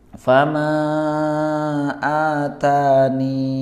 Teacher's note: ya-nya dibaca dengan sukun sehingga memanjangkan huruf nun sebelumnya. Tadi caranya sudah dipraktikan, yakni dibaca fama atani, ya, ni-nya menjadi dua harokat. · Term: menetapkan